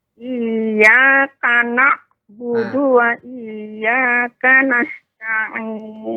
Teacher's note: Di situ ada huruf ain, mengalir sedikit suaranya. Nah. Karena kalau kita baca tidak alirkan, seolah kita terdengarnya tadi hamzah.